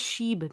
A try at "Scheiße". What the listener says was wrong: Yeah, that's not a B. That's not a B. That's in German. It sounds like a double S.